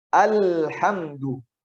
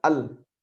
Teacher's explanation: Lam itu tidak terputus. Bukan al. Tapi dia agak mengalir, tapi juga tidak semengalir rakhawah. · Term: sifat bainiyah